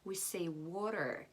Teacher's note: The T here becomes like an R, between and W, water.